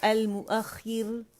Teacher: یہاں پہ موٹا ہم رو موٹا پڑھ رہے تھے المؤخر موٹا, اور جب وقف کریں گے تو المؤخر را جو ہے وہ باریک ہو جائے گی